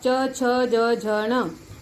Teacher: तालव्य यानी ये तालु है ना, इसमें आता है च वर्ग और य, श।